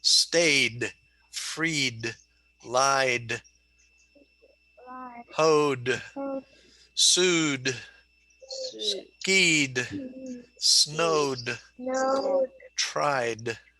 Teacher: the final ed is pronounced like d after all vowel sounds